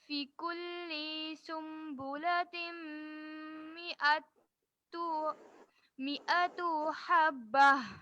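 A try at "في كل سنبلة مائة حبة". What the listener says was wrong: فی کلی، فی کو کھینچیے. فی کلی.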